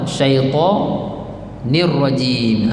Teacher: Apabila tuan-tuan masuk ra, tuan-tuan kena ada getaran sikit pada huruf ra tu. Takrir orang panggil.